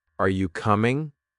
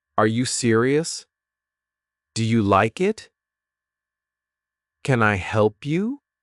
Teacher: Voice rises at the end. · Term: rising intonation